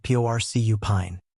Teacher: This stress pattern makes the ine sound like in. In porcupine the stress is on the first syllable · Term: Word stress